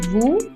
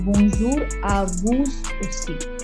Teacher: because it is followed by a vowel, it is bonjour à vous aussi. Yes, it's a liaison.